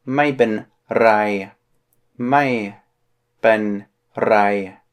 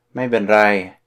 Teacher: You gotta roll your R there.